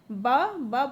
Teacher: श मूर्धा, क्योंकि जब श बोल रहे हैं तो हमारी जीभ थोड़ा रोस्ट हो जा रहा है, घूम जा रहा है। ब बोलने पे हमारे दोनों होठ आपस में मिल जा रहे हैं, तो ओष्ठ हो।